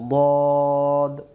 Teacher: মুখটা গোল করে এটা বলবো দদ